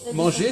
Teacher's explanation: Eh bien, manger, ça c'est qu'il n'y a pas de R. Il y a le R écrit, mais ça ne s'entend pas.